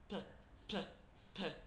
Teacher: so it's ejective so there's a lot of air coming out apparently